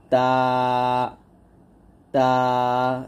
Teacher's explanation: আবার বলেন আমার সাথে বা দুই ঠোট স্বাভাবিকভাবে মিল করে আমরা পাতলা করে বা উচ্চারণ করব বা তারপর তা জিহ্বার আগার সামনের উপরের দুই দাতের গোড়ার সঙ্গে লাগিয়ে তা উচ্চারণ করতে হবে